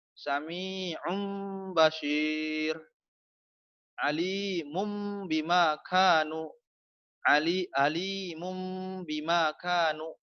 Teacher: Menukarkan suara nun mati atau tanwin pada mim yang ringan apabila bertemu dengan huruf yang satu, yaitu ba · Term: iqlab